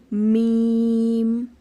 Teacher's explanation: بند ہونٹوں کے خشک حصے سے ادا ہوتا ہے